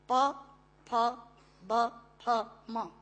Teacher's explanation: दोनों होंठ मिलाकर बोले जा सकते हैं। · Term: ओष्ठांग